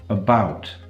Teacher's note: About. The first syllable in about is a schwa.